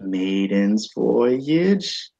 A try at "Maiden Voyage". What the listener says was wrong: Maiden Voyage, not maidens. Yeah, Maiden Voyage. But yeah, Maiden Voyage.